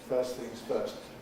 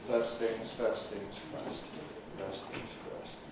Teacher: We learnt about elision, the omission of certain sounds, how in the phrase first things first, we normally omit the T in first and normally say first things first.